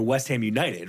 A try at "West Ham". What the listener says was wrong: I just think it's cute you pronounce the H in West Ham.